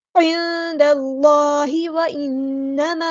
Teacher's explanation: نون پہ غنہ زبانی ہوگا، ایک الف کے برابر رکیں گے · مد منفصل ڈسکنیکٹڈ مد، ہم نے 2 یا 4 کاؤنٹ ہم نے اس کو لمبا کرنا ہے